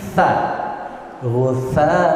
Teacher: Sa tempatnya ujung lidah nempel di ujung gigi atas.